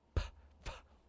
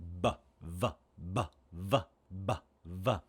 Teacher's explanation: these are the same the same sounds, except b and v are voiced, and p and f are voiceless.